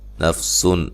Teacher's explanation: نون تنوین کا اظہار ہے، غنہ نہیں کریں گے